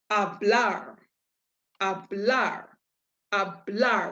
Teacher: if this last letter is not one of these seven then the stress falls on your last syllable